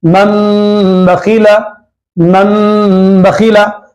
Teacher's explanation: نون کی آواز نہیں نکال کے میم کی آواز نکالنا ہے